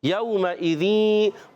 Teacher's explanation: واو ساکن پہلے زبر آ جائے، واو لین ہوتا ہے، نرمی سے ادا کریں گے